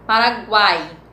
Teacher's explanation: Paraguai, no guai, na última sílaba, nós temos o ai. Nós temos semivogal o a vogal e o i semivogal, certo? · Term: tritongo